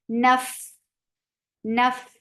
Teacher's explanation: Fa will get hums, and hums is a flow of breath.